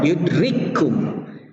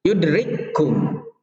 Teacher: Kaf yang pertama di sini mati, kaf yang keduanya berharkat, maka langsung saja kita masukkan kaf yang pertama ke kaf yang kedua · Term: idgham